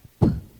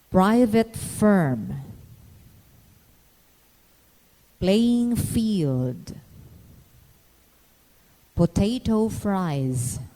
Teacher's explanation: To produce the P sound, bring the lips together, stopping the breath stream. Raise the soft palate. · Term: plosive P